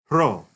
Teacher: Just do the best approximation of that r sound you can, r sound. And at the beginning of words, ro even had a little breathiness, some aspiration, we call it.